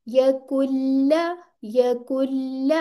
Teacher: यहाँ पे नून आ रहा है ना, लेकिन आगे लाम आ रही है, तो ये नून नहीं पढ़ा जाएगा